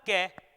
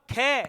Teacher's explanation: मैंने कहा क वायु कम मात्रा में बाहर निकली मैंने कहा ख तो वायु अधिक मात्रा में बाहर निकली